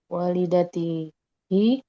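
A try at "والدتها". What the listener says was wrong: Kenapa hi?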